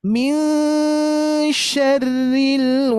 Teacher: harus kita ikhfakan dan gunanya sama Bu jaraknya sama dengan Nun tasdid ya I minyarril